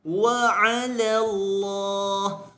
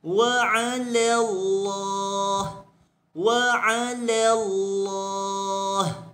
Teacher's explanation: la pada di sini tidak dibesarkan, kekal dengan muraqqaqah, kekal dengan nipis sebutannya. · Wa 'ala, la di sini perlu diringankan, perlu dinipiskan. Tetapi pada sebutan Allah, lam pada sebutan Allah itu dibesarkan.